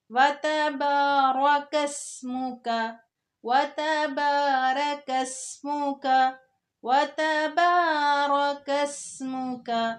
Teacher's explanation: سین کو باریک کر کے پڑھنا ہے سیٹی والی آواز کے ساتھ